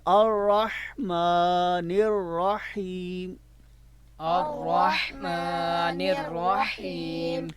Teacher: اب یہاں پہ اکثر را کو تھر تھرایا جاتا ہے، یعنی کہ را میں جنبش پائی جاتی ہے، تھر تھراہٹ پائی جاتی ہے، تو لہٰذا را کے پڑھتے وقت مشدد جب ہو، جب را مشدد ہو یعنی اس کے اوپر شد ہو 3 دندوں والی، را حرف کے اوپر جب شد 3 دندوں والی ہو تو اس کو ہم تھر تھراہٹ سے نہیں پڑھیں گے